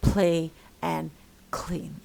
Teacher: voiceless la after a voiceless plosive consonant pa or ka as in play and clean